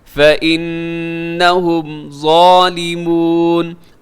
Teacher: نون ساکن ہے اور نون نون کے اوپر تشدید ہے تو یہاں پہ کیا ہوگا، غنہ ہوگا